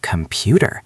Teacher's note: The first vowel and the last vowel are both schwas. They are shrunk down so the middle part can stand out.